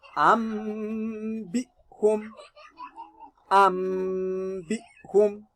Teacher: We are going to turn our Nunun to Mim. That Mimun is carrying Sukun. So we are going to read it as Ambihum. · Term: Iqlaab